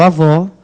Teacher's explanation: vó aí, da palavra avó, é a sílaba tônica de som aberto. Vai acento agudo.